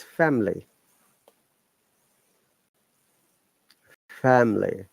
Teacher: I is the Schwa sound, which means we are not pronouncing the I at all.